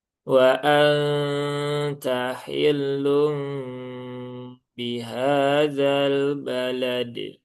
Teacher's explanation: lamnya jangan lama-lama, dalnya jangan ditambahkan hamzah, lamnya juga tipis, baknya jangan sampai keluar hamznya.